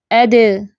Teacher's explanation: जब साकिन होता है तो इसकी आवाज उछल है · جب ساکن ہوتا ہے تو اس کی آواز اچھلتی ہے